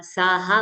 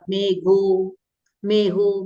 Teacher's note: असंयुक्त माने संयुक्त लेटर नहीं होना चाहिए कंजंक्शन नहीं होना चाहिए ख घ थ ध भ को वो क्या हो जाता है ह हो जाता है